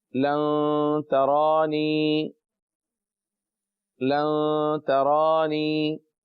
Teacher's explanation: تا کو تا رہنے دیجئے، را کو پر پڑھیں کیونکہ اس کے اوپر کھڑا زبر ہے، اور زبر ہو یا کھڑا زبر ہو، پیش ہو یا الٹا پیش ہو، چاروں کیفیات میں را پر پڑھا جائے گا.